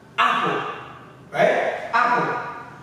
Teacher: So the stress is on the first syllable, the a.